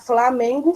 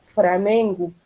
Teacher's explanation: Ó, na fala ocorrem também alguns registros diferentes da norma padrão para os encontros em que a segunda consoante é L. Nessas variantes linguísticas, substitui-se o L por R. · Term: substituir o L por R